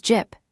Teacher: jip meaning house ending in a held p